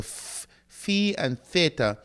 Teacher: Notice the flow of air continues, so those are called fricatives, continuation of the flow of air.